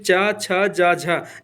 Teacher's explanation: चा, छा, जा, झा ये स्पर्श संघर्षी हैं